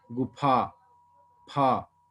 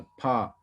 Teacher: फा को बोलते समय दोनों होंठ मिलते हैं